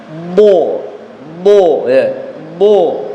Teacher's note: Nah, tempat keluarnya huruf dod ya, tepi lidah bagian belakang ini ya, tepi lidah bagian belakang atau samping lidah bagian belakang ditemukan dengan kedua gigi geraham bagian atas. Jadi otomatis ketika ini bertemu dengan gigi geraham bagian atas, ini pangkalnya pasti naik ya.